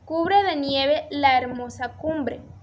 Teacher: básicamente suena como si se tratara de una vocal porque la H es muda